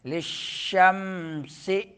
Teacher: شین میں آواز پھیلتی ہے منہ میں، تفشی ہے، اور میم میں غنہ انی، سین میں سیٹی نکالیں۔